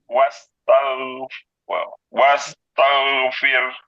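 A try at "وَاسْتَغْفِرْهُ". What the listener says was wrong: Jadi mulutnya nggak meringis, seperti bulat saja, sambil angkat pangkal lidah. Wastagh, wastaghfir.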